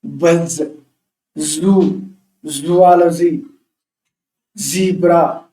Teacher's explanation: సో ఇది vibration, vocal cords vibrates అవుతాయి. ఇది వాయిస్డ్ సౌండ్